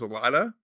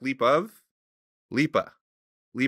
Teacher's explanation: the of becomes a